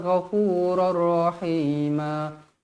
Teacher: Tanwin yang tidak selari bertemu dengan huruf ra hukumnya idgham bila gunnah. Memasukkan tanpa dengung.